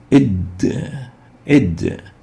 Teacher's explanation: the Dal articulates from the top of the tip of the tongue with the gum line of the upper two incisors.